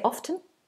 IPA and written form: ɒftən (often)